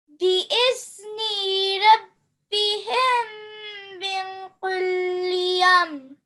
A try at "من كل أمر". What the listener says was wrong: Yeah, so just this qaf. This is not the thick one, okay? It's the thin one. من كل أمر.